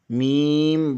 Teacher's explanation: بند ہونٹوں کے خشک حصے سے میم ادا ہوتا ہے